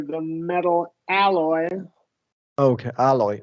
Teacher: we're gonna do wide short A there